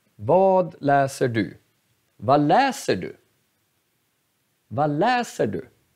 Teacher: Vi hör att läser är betonad. Det här ordet är betonad.